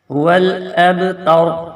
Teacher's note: یہ با کے اوپر کلکلا ہوگا لیکن شدت کے ساتھ نہیں ہوگا